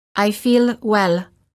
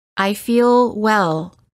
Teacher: the American L is softer and longer than the l sound of many other languages · when the L occurs at the end of the word make sure that you don't release it quickly · Say, I feel well. Notice how the L is prolonged by keeping the tongue up longer.